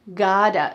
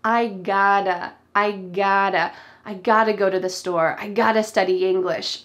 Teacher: The T, does it sound like a T? I gotta. Nope. Instead, it sounds like a D.